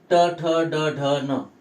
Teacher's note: यांचा उच्चार करताना आपल्या जिभेचा स्पर्श मूर्धेला लागतो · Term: मूर्धन्य